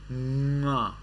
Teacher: when you touch the up and down, up and bottom parts of your mouth at the back and make the sound nga